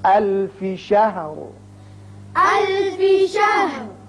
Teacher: لہٰذا یہاں وقف کریں گے. وقف کی صورت میں جب را ساکن ہوگا تو اس کو پر پڑھیں گے چونکہ پیچھے زبر ہے. الف شہر. الف شہر.